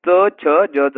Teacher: हे काय तालव्य आणि दंत तालव्य सुद्धा आहेत